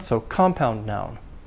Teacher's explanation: Main stress on the first word, compound. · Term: compound nouns